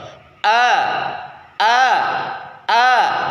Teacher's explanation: pertama huruf Hamzah Hamzah itu ditenggorokkan paling bawah caranya yang pertama rongga tenggorokan bagian bawah saling menghimpit sehingga suara dan nafas yang sedang keluar dapat tertahan